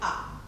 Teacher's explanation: And open and front. So we can say it's open, front, and spread.